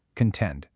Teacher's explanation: The stress is solidly on that second syllable.